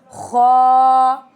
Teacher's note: खल के दरमियान हल के ऊपर वाले हिस्से से ख निकलता है। आवाज में भारीपन है इसका। ख from the upper throat heavy sound.